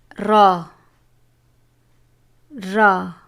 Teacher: زبان کی نوک اور مقابل کے تالو سے ادا ہوتا ہے